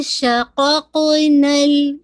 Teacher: ٹھیک ہے, قاف کا مخرج آپ سب جانتے ہیں کہ بالکل آپ کی جو بالکل روٹ آف دا ٹنگ ہے سافٹ پیلٹ سے لگے گی